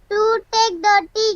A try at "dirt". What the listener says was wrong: Dirty नहीं है, DIRT, dirt. Dirt, हाँ.